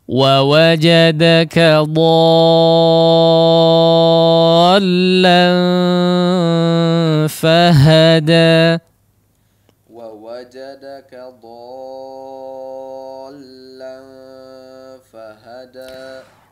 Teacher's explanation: Nah, perhatikan di lamnya ya, di lamnya hanya tasydid saja tanpa harus dipanjangkan suaranya ya, apalagi dimasukkan ke hidung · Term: huruf lam yang bertasydid